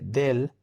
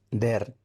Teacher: Este caso se da porque en Dominicana la R y la L se intercambian o se neutralizan. En el sur, de donde yo soy, generalmente cambiamos la L por la R o la sobrepronunciamos. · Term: rotacismo